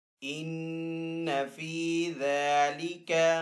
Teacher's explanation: ذال کے اوپر کھڑا زبر ہے تو ذال کو ایک الف دو حرکات کے برابر کھینچ کر ادا کریں گے